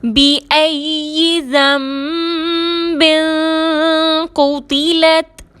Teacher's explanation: قاف حروف مستعلیہ میں سے ہے، موٹا پڑھیں گے، تا کو باریک پڑھیں گے۔